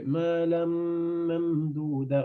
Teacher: On fait غنة dans le mime. Pourquoi? Parce que mime shadda.